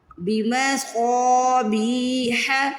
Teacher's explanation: بی میں دیکھیے زیر کے بعد یا ساکن ہے، بی کو کھینچنا ہے، پھر ح کی آواز حلق سے نکالنی ہے۔